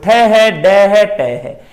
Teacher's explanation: जीभ पुट्ठी होके जीभ की जिहड़ी नोक है उत्ते लग रही है। जिद्दां मैं मुंह खोल के बोल के विखा रहा जिवें टै, इस तरह ते फिर वापस मूल अवस्था ते होण ते टै दा उच्चारण हुंदा है। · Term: उल्ट जीबी